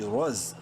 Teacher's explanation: رو کو منہ بھر کے پڑھنا ہے زا سے ملاتے وقت